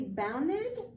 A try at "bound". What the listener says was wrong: You were adding an extra ED.